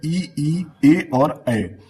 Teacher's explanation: जब आप इ का उच्चारण करोगे तो आपका जीभ का जो अगला भाग होता है जिसे अग्र भाग बोलते हैं वो एक्टिव होता है